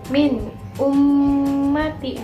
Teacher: nun sukun bertemu hamzah, dibacanya jelas kan · Caranya itu dibaca secara jelas tanpa mendengung. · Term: idhar